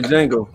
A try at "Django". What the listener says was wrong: It's not. The D is silent. The D is silent. The D.